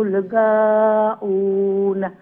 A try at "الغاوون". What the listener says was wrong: গাইন্দে আর একটু মুলায়ম করে উচ্চারণ করবা। গা সাউন্ড হইতো না, গ মুলায়ম করিয়া।